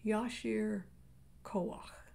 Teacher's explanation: that last syllable is the guttural ah that clears your throat try again yashir kawak i can't tell you how much jack's